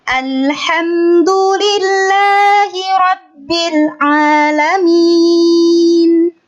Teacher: Jadi dari kata Alhamdulillah tuh udah naik.